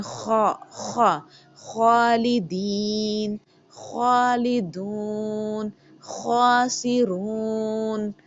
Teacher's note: خوا کی صفت ہے کہ اس میں تھوڑی سی رگڑ کھاتی ہوئی آواز آئے گی